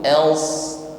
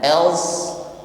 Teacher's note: Di sini sifatnya hamas, tetap ada nafas yang mengalir namun huruf swat di sini juga diiringi sifat isti'la, irtifa'ul lisan ilal halakil a'la, terangkatnya pangkal lidah ke langit-langit sehingga suaranya ini terasa ngumpul ya di langit-langit mulut kita. Else ya terasa ngumpul di langit-langit sehingga suaranya terkesan berat atau tebal ya.